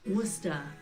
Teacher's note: with this being Massachusetts many locals even leave off the r like we do in Britain Worcester this might be where the similarities end you see Worcester